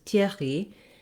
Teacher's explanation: the french r that's back in the throat and it has some friction to it and then the y is the again back to